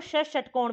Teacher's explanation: र का भी और ष षटकोण का भी इनका स्थान क्या होता है मूर्धा होता है